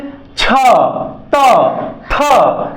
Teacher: शवास बाहर आ रहा है नाद का ना कोई उपयोग नहीं हो रहा है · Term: अघोष वर्ण